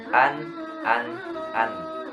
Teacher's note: Tidak ada qalqalah, tidak mantul, tidak ditahan juga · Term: idhar